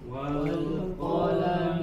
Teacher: Di sini qafnya dibaca tebal, ya. Qaf berharokat fathah.